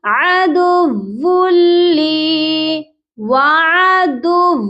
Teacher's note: یہاں پر ون کی آواز نہیں آئے گی، تنوین کی آواز جو ہے وہ نہیں آئے گی. یہاں پر ہوگا ادغام بلا غنہ، یعنی کہ ہم یہاں صرف ملائیں گے لیکن غنے کے بغیر